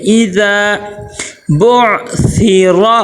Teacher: آگے اذا، ای حمزہ زیر ای، حمزہ زیر ای، حمزہ زیر اے کی آواز نہ آئے، معروف ادا کرنا ہے، مجہول نہیں۔ آگے پھر ذال کے ساتھ الف مدہ آ گیا، ذال کو ہم کیا کریں گے، ایک الف کے برابر لمبا کریں گے